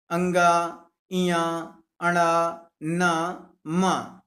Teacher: इनका उच्चारण करते समय नासिका का भी प्रयोग किया जाता है, इसलिए नासिक्य व्यंजन कहलाते हैं